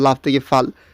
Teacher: সামনের ব্যঞ্জনটা পরে গেল এবং পরের ব্যঞ্জনটা আগে আসলো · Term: ধ্বনি বিপর্যয়